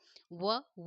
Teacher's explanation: है दंत और रोट ठीक है दोनों से निकलता है व व बोलते हैं तो दंत और ओष दोनों को टच करके निकलता है इसलिए उसका उचा स्थान दंतमंजन है आराम से याद कर सकते